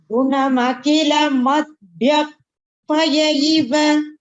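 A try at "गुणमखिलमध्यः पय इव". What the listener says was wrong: Just that the kha, the Mahaprana, if it is clear, it would be better.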